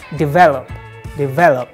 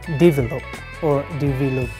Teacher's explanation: This word causes lots of problems for non-native speakers because of its stress. The stress is on the second syllable, on the V, not on the first syllable, D.